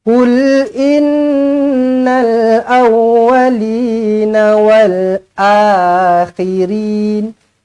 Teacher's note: Nun sabdu wajibul gunah dengungkan dua harakat